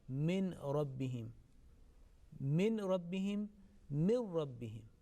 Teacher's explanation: If after noon sakin or tanween the next letter is ra, then noon sakin is properly dropped, is quickly dropped.